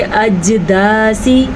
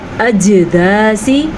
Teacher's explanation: حروف قلقلہ میں جیم شامل ہونے کی وجہ سے وہاں پہ جھٹکے کی کیفیت ہوگی